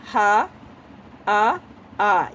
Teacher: हा, आ, ये कंठ से निकलता है, इसे कहते हैं कंठीय